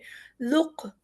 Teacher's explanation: یہاں پر کچھ ایسے حروف ہیں کہ جن کے اوپر قلقلہ ہو رہا ہے، ہم انہیں تھوڑا سا ٹھہر کے آواز کو ڈبل کر کے پھر آگے بڑھیں گے۔ ذق، یہاں پہ قاف پہ تھوڑا سا قلقلہ ہو رہا ہے